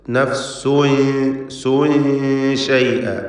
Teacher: നഫ്സുൻ എന്നതിലെ തൻവീനിനെ ഇഖ്ഫാ ഹഖീഖി നൽകി മറച്ച് മണിക്കണം. മണിക്കലിൽ തർക്കീഖാണ് വേണ്ടത്.